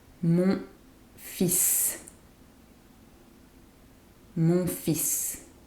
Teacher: The L is silent but we pronounce the S.